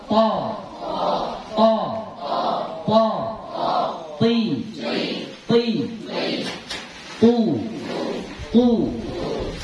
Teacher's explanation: jadi terasa lidah kita itu menyentuh gigi gigi seri yang di depan ya